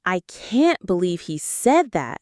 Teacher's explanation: You hear the stress on the word said. You hear the surprise, the slight disbelief.